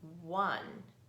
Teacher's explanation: Notice that it has an unusual sound for the letter O. It sounds like it starts with a W, right? One.